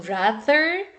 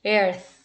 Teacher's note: these two sounds are interdental sounds